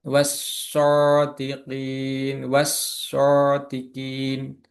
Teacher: Jadi huruf shadnya menjadi doble atau tasjid